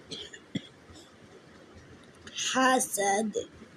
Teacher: কণ্ঠনালীর মধ্যখান থেকে উচ্চারিত হবে